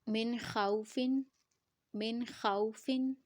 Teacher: نون کے ساؤنڈ کو غنہ نہیں کریں گے کیونکہ نون ساکنہ کے بعد ہمارے پاس خا ہے، اور خا کو ہم جلدی سے پڑھیں گے کیونکہ ہمارے پاس لین لیٹر ہے، واو لین ہے. واو ساکنہ سے پہلے زبر ہوگی تو وہ واو لین ہوگا.